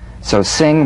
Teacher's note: the NG is a voiced tongue backed soft pallet nasal consonant so sing with the back of the tongue in contact with